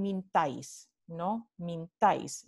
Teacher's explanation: La I es átona, forma parte de la sílaba átona y ocurre delante de una A tónica.